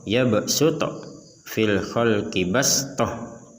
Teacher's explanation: maka dibacanya menggunakan sin, bukan dibaca menggunakan shad